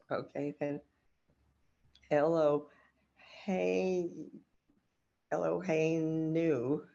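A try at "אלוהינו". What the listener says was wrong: yes, nice.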